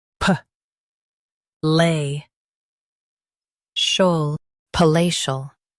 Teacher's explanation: Emphasize lay and soften shol.